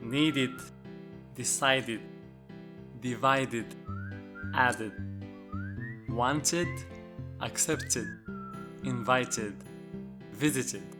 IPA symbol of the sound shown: id